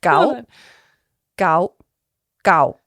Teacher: there's a rising tone a steady tone and then a falling tone